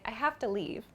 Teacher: this o sound in the to is a very quick sound too I have to T so it's like I have to leave